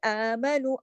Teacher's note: आमनु, अलिफ पे देखिए, जो हरका है इसको कहते हैं खड़ी मद, और ये एक अलिफ के बराबर पढ़ी जाती है